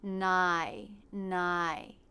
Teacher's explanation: Then for the second half of the diphthong, the tongue tip stays down while the front part of the tongue stretches up towards the front part of the roof of the mouth